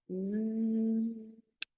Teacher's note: allowing a buzzing sound to come out of more of the teeth than the lips. So the teeth come together and the exhale will be a zzz. · So the teeth come together and the exhale will be a zzz. The tongue is almost resting right behind the teeth, and there's a light opening in the lips, and the vibration is coming out in that buzzing